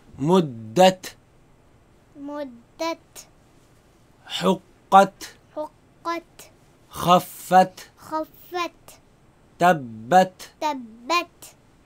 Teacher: Hams is this sharp sound that you make on certain letters, especially in the ta and the kaf.